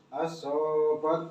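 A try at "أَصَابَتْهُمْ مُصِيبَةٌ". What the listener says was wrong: Shotnya enggak tasdid. Al-sol biasa aja. Shotnya juga enggak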